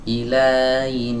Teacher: Jadi huruf H-nya ini terdengar samar, tidak kena makhrajnya. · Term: khofa